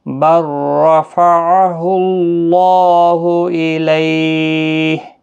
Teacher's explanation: یہاں را کے ساتھ با کو ملایا جائے گا، را پور پڑھا جائے گا زبر کی وجہ سے، اور اللہ کلام بھی پور پڑھا جائے گا اس پیش کی وجہ سے۔